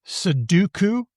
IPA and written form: səduku (Soduku)